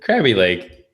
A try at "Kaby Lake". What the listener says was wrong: There's no R. There's no R. Kaby.